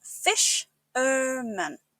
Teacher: Make sure to emphasize the first syllable and keep the man at the end soft